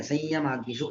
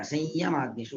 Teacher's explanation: ಸಂಯಮಾಗ್ನಿಷು ಯಕಾರ ಅನುನಾಸಿಕ ಮಾಡಿ ಹೇಳ್ಬೇಕಾಗತ್ತೆ. ಅನುನಾಸಿಕ ಯಕಾರ ಆದ್ಮೇಲೆ ನಾರ್ಮಲ್ ಯಕಾರ ಸಂಯಮಾಗ್ನಿಷು ಅಂತ ಹೇಳ್ಬೇಕು